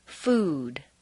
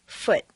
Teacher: The oo sound is located far forward in the mouth and requires you to round your lips.